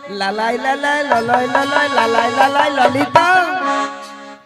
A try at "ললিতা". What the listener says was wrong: মাসি ওটা লালাই লালাইও নয় আর ললয় ললয়ও নয়, বলো ললিতা।